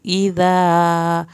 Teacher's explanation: یہاں پر اذا دال کو نرمی سے ادا کرنا ہے، الف پوری پڑھنی ہے